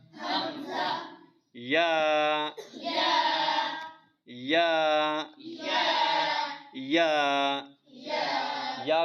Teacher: اکثر بچے پڑھتے ہیں یا، وہ غلط ہے۔ یا جو جیم اور شین کا مخرج ہے وہی یا کا مخرج ہے، یعنی زبان کا درمیان اوپر تالو کے درمیان سے لگے